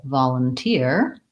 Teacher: when we look at volunteer we have third syllable stress volunteer and again the vol again says ah in this word